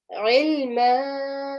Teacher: the ayn, the sound needs to come from the middle of your throat